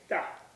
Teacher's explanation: if you say it properly there'll be hardly any breath will come out of your mouth when you say it and so you do you you puff less you know you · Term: unaspirated T